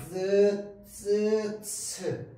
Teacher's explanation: 파열의 원리와 마찰의 원리가 동시에 적용되어 있는 겁니다 · 공기가 나오는 소리를 한번 막았다 열어 주는데라고 해서요 살짝만 열어 줍니다 한번 막았다가 열어 주는데 살짝만 열어 줘요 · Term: 파찰음